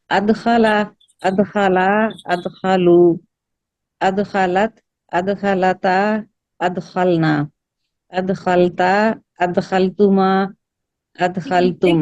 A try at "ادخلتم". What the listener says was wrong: یہ تا تو آپ کی مد اصلی میں چلی گئی. پھر سے واپس آئے, حاضر پہ آئے, حاضر پہ.